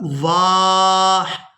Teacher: تو وقف کی صورت میں ہا کو ساکن کر دیں گے، واؤ کو الف مدہ کی وجہ سے کھینچتے ہوئے اس ہا ساکن کے ساتھ ملائیں گے